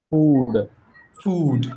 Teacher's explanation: It's the lengthy ooh sound.